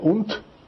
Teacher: o D no final soa como T